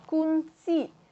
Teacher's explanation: pita suara akan direnggangkan dan arus udara yang keluar dari pada paru-paru melalui rongga mulut tanpa menggetarkan pita suara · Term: letupan lelangit tak bersuara